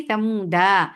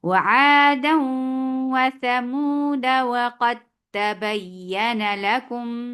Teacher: नो, मैं समूदा नहीं पढ़ रही बल्कि दाल के ऊपर फतहा बस छोटी सी दे के आगे जा रही हूँ